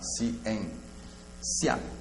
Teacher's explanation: ciência eu vou ter um hiato e um ditongo, porque si, em, ouço as duas vogais, elas ficam separadas